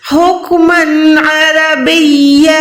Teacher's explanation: اچھا, کافی لوگ عربیہ پڑھتے ہیں, لیکن یہ بھی بہت بڑی مسٹیک ہے. یہاں پر با کے بعد یا ہے, یا پہ شد ہے, یعنی با کو پہلے آپ نے یا کے ساتھ ملانا ہے, پھر آپ نے یا الف زبر یا کو پڑھ کے سٹاپ کرنا ہے.